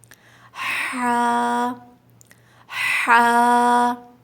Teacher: ہا حلق کے بیچ سے ادا ہوتا ہے